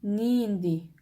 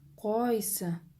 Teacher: В вопросительных словах ударение падает на первый слог.